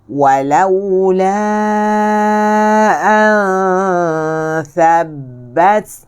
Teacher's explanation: Makhraj tha di mana? Makhraj tha di sini, di celah gigi. Di celah gigi.